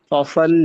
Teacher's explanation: فصل لام کو لربک. باریک پڑھیں گے اور صاد کو موٹا پڑھیں گے